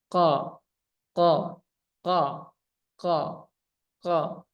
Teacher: Kemudian isti'la. Isti'la ini pangkal lidah naik nih saat dia naiknya.